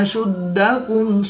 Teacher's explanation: دال حروف قلقلہ میں سے ہے تو یہ مشدد ہے تو یہاں پر ہم قلقلہ کبریٰ کر کے پڑھیں گے.